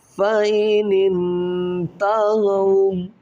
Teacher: نون ساکن کے بعد حروف اخفا میں یہاں تا آ رہا ہے تو یہاں پر اخفا غنہ کریں گے